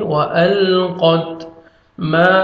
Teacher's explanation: الف مد ہے 1 سیکنڈ میم کو کھینچنا ہے، الف سے پہلے زبر ہے.